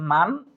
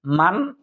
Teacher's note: গুণ আমরা করবো না যেহেতু নুন সাকিনের বামে ইজহারে হরফ হা এসেছে